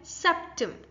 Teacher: In septim, the stress is on s. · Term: primary stress